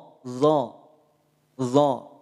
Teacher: bisa berbunyi vokal o dari mana dari pangkal lidah yang terangkat ya bukan dari bibir yang maju bukan dari bibir yang Monyong Makanya tidak perlu dimonyongkan bibir kita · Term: istila